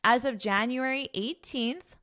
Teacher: even though in the spelling it is not there, I'm going to pronounce that TH